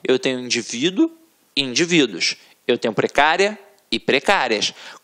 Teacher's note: Reparem que a sílaba tônica está na penúltima sílaba, portanto é uma paroxítona, e é uma paroxítona terminada em ditongo.